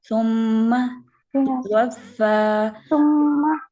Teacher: ثم میم کے اوپر جو زبر ہے نا اس کو لمبا نہیں ہونے دینا